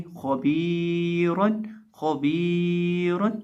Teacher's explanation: तो यहाँ याए मद्दा है इसलिए हम बा को लंबा करेंगे और रॉ के ऊपर 2 ज़बर है इसलिए हम रॉ को मोटा करेंगे। तो हम पढ़ेंगे खबीरन खबीरन, यानी खौ को और रॉ को मोटा करके पढ़ेंगे और बा को एक अलिफ के बराबर लंबा करके पढ़ेंगे। · अब खौ को हम मोटा करके पढ़ेंगे क्योंकि खौ हरूफ मुस्तालिया में से है · बा को हम एक अलिफ के बराबर खींच के पढ़ेंगे क्योंकि इसके साथ याए मद्दा आ रही है। अलिफ मद्दा हो, वाव मद्दा हो या याए मद्दा हो, इनमें से कोई भी मद्दा हो एक अलिफ के बराबर हरफ को लंबा किया जाता है।